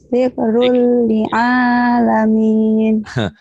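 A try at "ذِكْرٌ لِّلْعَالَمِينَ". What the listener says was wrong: Kan ada lilnya. Zikrul lil gitu. Ketinggalan. Zikrul lil'alamin.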